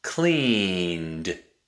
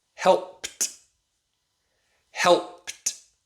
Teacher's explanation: Cleaned. The D makes a D sound. Laughed. The D makes a T sound.